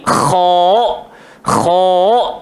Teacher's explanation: Makhraj dia hanya pada rongkong bahagian a'la, paling atas sekali. Jadi kita pun tebalkan bunyi datang daripada tekak kita ni. · Jadi kita pun tebalkan bunyi datang daripada tekak kita ni. Kha, kha. So tak bolehlah kita baca kha, maka dia akan jadi nipis. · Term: huruf kha